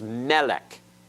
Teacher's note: notice the accents on the first syllable